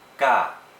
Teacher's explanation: Fourth tone is in the middle, and it's very short. It sounds kind of like you're yelling it, and it's very staccato.